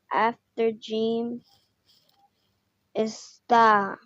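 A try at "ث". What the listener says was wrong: No, that's tha. 3 dots tha. 2 dots ta. 3 dots tha.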